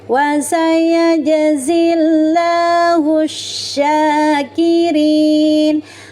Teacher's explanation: ada huruf ra berharokat kasrah, ro-nya dibaca secara tarkik atau tipis.